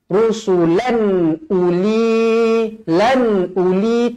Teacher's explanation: tanwin yang selari bertemu hamzah, hukum dia idhar halki. Dibaca jelas dan terang.